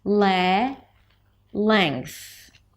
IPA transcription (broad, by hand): leŋkθ